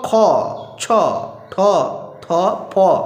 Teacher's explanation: এই ধ্বনিগুলো হচ্ছে অঘোষ ধ্বনি, এতটা গাম্ভীর্য নাই।